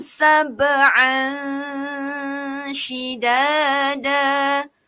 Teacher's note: Menyembunyikan sedikit bunyi nun atau tanwin dengan melebihkan sedikit bunyi huruf sya tersebut. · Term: ikhfa hakiki